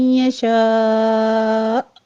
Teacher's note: شاء میں مد متصل واجب ہے، اس کو ہم نے 5 کاؤنٹ کرنا ہے ، اور آگے حمزہ پر ہم جھٹکے کے ساتھ وقف کر